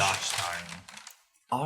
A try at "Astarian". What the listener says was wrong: Well, the H is silent. It's Astari.